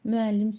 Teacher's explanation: müəllim sözündə ü dodaqlanan saitdir